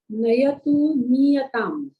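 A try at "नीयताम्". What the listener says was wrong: Well done. Niyatam, not Nayatam.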